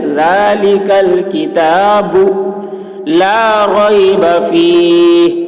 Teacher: زبان کی نوک ثنایا علیہ کا جڑ، یعنی اوپر کے جو آگے کے دانت ہے اس کا سرا، دونوں کے ٹچ ہونے سے ذال ادا ہوتی ہے۔ ذال کی آواز بہت ہی باریک ہوتی ہے۔